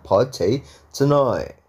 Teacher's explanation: Itu namanya glottal ya, guys. T yang diglottal kan.